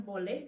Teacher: Sebagai contoh, bagi perkataan boleh dalam bahasa Melayu standar mengalami proses labialisasi pada suku kata pertama sahaja, dan proses tersebut turut sama berlaku kepada dialek Perlis. Ketika hendak menyebut konsonan B yang diikuti vokal belakang O, berlaku sedikit pembundaran pada bibir.